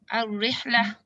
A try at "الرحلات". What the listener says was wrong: There is ألف.